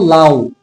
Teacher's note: যখন আমরা উ উচ্চারণ করব লাউ, তখন এই উ এর উচ্চারণ বেশিক্ষণ করতে পারবো না। অর্থাৎ এখানে উটা হচ্ছে অর্ধ স্বরধ্বনি।